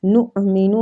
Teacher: حمزہ پہ جھٹکا دیں گے